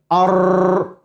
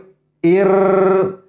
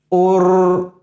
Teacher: یعنی اوپر کے جو دانت ہیں اس کے پیچھے ہارٹ پیلٹ وہاں پہ زبان کی نوک جا کر کے لگتی ہے اور ٹکرا کے کئی دفعہ 2-3 دفعہ زبان ٹکرا کے وہاں سے آواز نکلتی ہے. یہ ہے را کا مخرج.